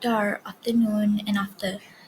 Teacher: It is an open back vowel.